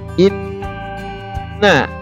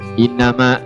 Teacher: Yang pertama huruf tersebut mati, yang kedua huruf tersebut hidup. Namun nun yang ditasydidkan, maka yang pertama yang disukunkan itu harus ditekan dan ditahan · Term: nun bertasydid